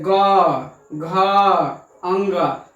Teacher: जब आप ग बोलेंगे ग, तो देखिए यहाँ क्या हो रहा है? झंकार या कंपन हो रहा है। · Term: घोष या सघोष वर्ण